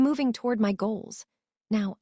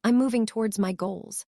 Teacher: Toward ends cleanly, sharply like a period. Towards has that soft s that trails off like an ellipsis. It subtle sound psychology.